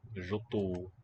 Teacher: Note how the ta darkens the u sound.